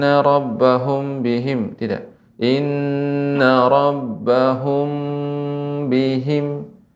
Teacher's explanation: apabila mim mati bertemu dengan ba Ini namanya Ikhfa Syafawi ya dibaca dengan disertai dengan dengung atau Pangkal hidung